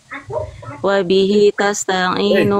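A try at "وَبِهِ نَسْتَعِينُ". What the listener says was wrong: nas enggak ada tak. Nasta'in. Nasta'in.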